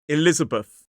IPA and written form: ɪˈlɪzəbəθ (Elizabeth)